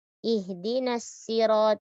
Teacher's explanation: jangan merubah huruf shad menjadi huruf sin